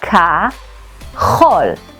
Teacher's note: The tricky part is pronouncing the ch in kachol. Try coughing and feel the back of your throat.